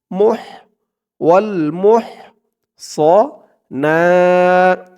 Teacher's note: হার উচ্চারণটা গলার ভিতর থেকে চিকুন হয়ে বের হবে ওয়াল মুহ না এক আলিফ টান খারা জবর ওয়ালতু মিনান মিনান